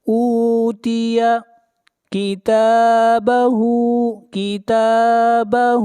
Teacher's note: تا کو کھینچ کر پڑھیں گے ایک الف کے برابر، تا کے اوپر کھڑی زبر ہے، اور ہا کو بھی کھینچ کر پڑھیں گے ایک الف کے برابر، ہا کے اوپر الٹا پیش ہے۔